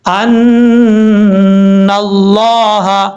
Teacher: نون کے اوپر شد غنہ کریں گے 1 الف کی مقدار۔ یاد رکھیے گا قرآن پاک پڑھتے ہوئے نون کے اوپر یا میم کے اوپر شد ہو تو وہاں غنہ کیا جاتا ہے، نون مشدد کا اور میم مشدد کا۔